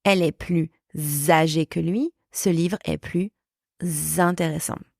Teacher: We are not pronouncing the sound s. The liaison adds the sound z for zero or zebra or zoo between the word plus, plus, and the following word starting with a vowel.